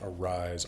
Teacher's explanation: in English, arise, the emphasis is on the second syllable, but most words in Old English and all words in Old Norse are emphasized on the first syllable.